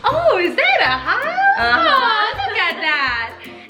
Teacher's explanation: And it's basically you're stretching out the vowels and you have a little more intonation. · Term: PARENTESE